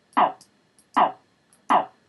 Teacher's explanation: there is indeed and very audibly a very abrupt fall in F0.